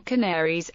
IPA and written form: kænəˈriːz (Canarese)